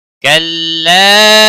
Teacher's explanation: کلا مد منفصل ہے تین الف کے برابر کھینچ کر پڑھیں گے